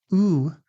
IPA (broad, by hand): u